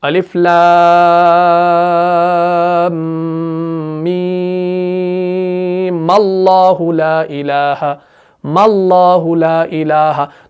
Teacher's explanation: تو وصل کی صورت میں ہم میم کو زبر دیں گے. ٹھیک ہے, ورنہ تو آخر میں میم سکون کے ساتھ ہے, ساکن ہے, لیکن اجتماعی ساکنین جب ہوا تو میم کو زبر دینی پڑے گی.